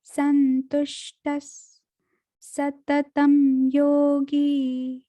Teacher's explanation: संतुष्टस विसर्ग को सा की ध्वनि से पढ़ेंगे।